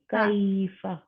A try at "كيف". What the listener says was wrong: لمبا نہیں زیادہ لمبا نہیں کرنا بس. کیف.